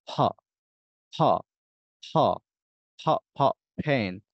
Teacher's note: ফ আমরা দুই ঠোঁটটাকে একসাথে একদম লাগিয়ে ফেলবো, এরপরে হচ্ছে ভিতর থেকে একটু ধাক্কা দেব, দেখবেন যে অতিরিক্ত একটা বাতাস বের হবে।